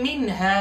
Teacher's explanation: मिन हा की नून पर गुन्ना नहीं करेंगे बल्कि इजहार करेंगे, हा। यहाँ की छोटी मद भी बाज लोग कहते हैं और इसको मद्दे मुनफसिल भी कहते हैं क़ुर्रा हज़रात के इस्लाम में।